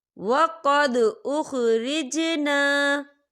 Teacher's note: یہاں پر دال ساکن ہے، یہاں پر قلقلہ ہوگا.